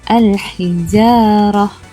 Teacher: Contoh ayat untuk huruf lam dibunyikan iaitu alif lam qamariyah ialah al-hijarah.